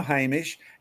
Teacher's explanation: what's happened is the s has actually turned into sh